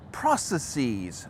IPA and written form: ˈpɹɑsəˌsiz (process)